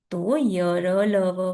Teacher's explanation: अंतःस्थ व्यंजन का उच्चारण करते समय जीभ मुंह के किसी भी भाग को पूरी तरह से नहीं छूती है